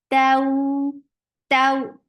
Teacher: Ta is very sharp, but the way you are making it long, it is soft.